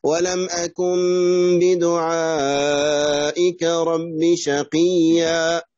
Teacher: يعني تقلب النون ميما وتخفى في الباء